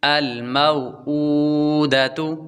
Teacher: میم کے بعد واو حروف لین ہے، واو ساکن سے پہلے زبر ہو، واو لین ہوتی ہے، واو لین کو لمبا نہیں کرتے